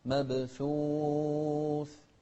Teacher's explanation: شوف الثاء نهمس فيها